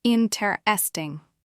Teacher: You can hear that the stress is on the first syllable, not the second.